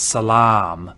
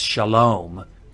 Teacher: If you know the Arabic word for peace, it's salam. And that long ah in Arabic is now an O in Hebrew. And so historically, cholam vav was a long ah class vowel, and that's why we put it here.